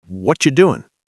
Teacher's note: What are you becomes Whatcha. Doing becomes doin'.